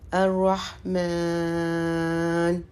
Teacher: اب آگے نون ہے، نون کو ہم کو ساکن کرنا، جو یہ کھڑا الف ہے یا کھڑا زبر ہے اس کو ہم تھوڑا لمبا کرتے ہیں، 3 سے 4 حرکت دیتے ہیں